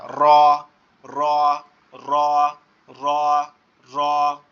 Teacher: জিহ্বার আগার উল্টো পিঠ উপরের তালুর সঙ্গে লাগায়া